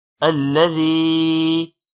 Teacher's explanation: الذي یا حروف مدہ ہے، تھوڑا لمبا کریں گے